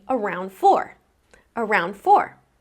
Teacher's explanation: Around four." Well, I actually don't need to pronounce that final d at the end of around now because since I've connected it to the next word, I actually have three consonant sounds in a row. N, d, and then f from the next word. So, I can skip over that d.